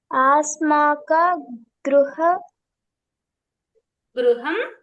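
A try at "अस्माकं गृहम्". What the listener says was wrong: అస్మాకం నాన్న, ఆస్మాకం కాదు, అస్మాకం.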